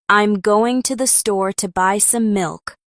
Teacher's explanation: the words going, store, buy, and milk are stressed